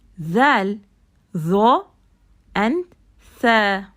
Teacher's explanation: when you say these letters, your tip sticks out, right? The tip of the tongue sticks out.